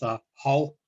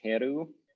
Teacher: the R was lost in pronunciation because of this de-rhoticization phenomenon where like syllable final R's were lost